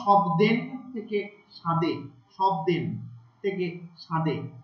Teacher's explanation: এই নাসিক্য ব্যঞ্জন লোপ পাওয়ার ফলে, অর্থাৎ ন ম দন্ত ন এগুলো সব লোপ পেয়ে যাচ্ছে, এর ফলে পূর্ববর্তী স্বরধ্বনি অনুনাসিক হয়ে যাচ্ছে